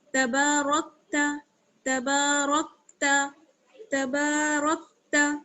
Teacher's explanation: را کو کاف سے ملائیں گے، را موٹا پڑا جائے گا، را کاف زبر رک، تبارک، تا زبر تا، تبارکت تبارکت تبارکت. · با میں الف مدہ جڑا ہوا ہے، ایک الف کے برابر کھینچیں گے، با الف زبر با، تبا.